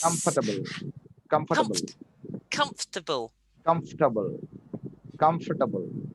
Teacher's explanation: we only pronounce it like it's got three syllables like comft